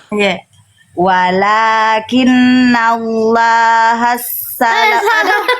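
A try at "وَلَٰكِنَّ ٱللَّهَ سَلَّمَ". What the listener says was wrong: Nah, iya, jadi jangan sinnya jangan ditekan.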